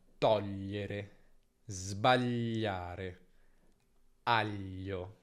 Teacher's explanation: Gli è un suono che tra vocali è sempre lungo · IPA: /ʎ/